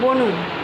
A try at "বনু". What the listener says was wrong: আবার ঠোঁট ঢোকাচ্ছ হবে না